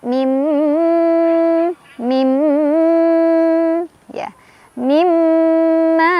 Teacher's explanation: Cara bacanya langsung masukkan ke mim si nunnya dengan dengungan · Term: idgham bi gunnah